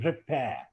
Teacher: So I speak first r because it is followed by e, not in the spelling, but a spoken e, repair. But the last r is silent. It is replaced by schwa,